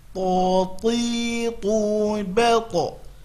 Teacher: Maka kita berusaha penyebutannya tidak mengeluarkan hams pada penyebutan huruf to.